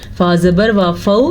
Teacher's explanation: ये वावलीन है, नरमी से पढ़ा जाता है वावलीन, और किसी भी सूरत में खींच के नहीं पढ़ा जाता